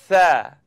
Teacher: So it's the tip of my tongue coming up out at the edge of my top teeth. Now, I'd just like you to simply blow the air between your tongue and your teeth.